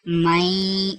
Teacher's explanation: غنے کی آواز جو ہے نا وہ ناک میں جانی چاہیے